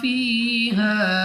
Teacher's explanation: الف سے پہلے زبر الف مدہ کھینچ کر پڑھیں گے. یا ساکن سے پہلے زیر یا مدہ، یا مدہ کو بھی 2 سیکنڈ تک کھینچنا ہے، لمبا کر کے پڑھنا ہے